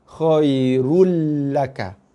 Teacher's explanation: Bukan lagi dibaca dengan run, tapi rul laka. Daripada khairun, kita baca dia dengan baris 1, khairu, tekan pada lam. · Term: Bacaan tasydid